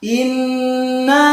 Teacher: Di ayat pertama, inna, nunnya harus ditekan karena di situ nunnya ada tasdid, kemudian dipanjangkan. Ini boleh panjang 2 harokat seperti mad tabi'i, boleh 5 harokat.